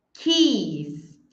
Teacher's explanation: Aqui, além do som do I ser diferente, chaves no plural não termina com som de S como beijo, termina com som de Z, porque tem vibração